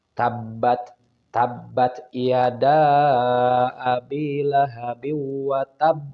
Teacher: wa tab itu kubro karena ada tasdid. Jadi ditambah tekanan, pantul ditambah tekanan.